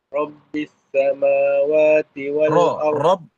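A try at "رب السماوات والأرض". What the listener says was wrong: Rob dia mesti bergetar kan. Rabbis samawati.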